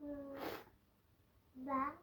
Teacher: दोनों होठों के अंदरूनी हिस्से जब मिले तो बा अदा होता है। जी बा यानी होंठ के जब दोनों अंदरूनी हिस्से मिलें तो उस वक़्त बा अदा होता है।